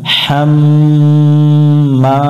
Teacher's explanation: হামিম জবর হাম, মিমের উপর তাসদিদ আছে, গুন্না করতে হবে, এই গুন্না করা ওয়াজিব